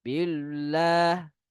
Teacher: ada juga sebagian yang membacakan billah dengan bacaan yang tebal